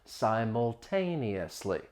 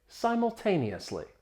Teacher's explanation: Now, it's a longer word, so I want to talk about the pronunciation quickly. Simultaneously, it has six syllables. The stress is on that third syllable.